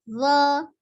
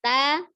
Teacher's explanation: Zo-nya tebal, ta-nya kan tipis. Berarti harusnya lebih terbuka yang zo.